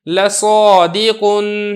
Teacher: الف سے پہلے صاد ہے جو کہ حروف مستعلیہ میں سے ہے، لہذا ہم نے الف کو یہاں پہ پر کر کے پڑھا ہے